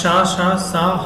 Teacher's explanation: ऊष्म या संघर्षी क्यों कहते हैं इसको, कि शा शा सा हा बोलने पर हमारा जो जीभ है, हमारी जो जीभ है वो संघर्ष करती है किसके साथ, वायु के साथ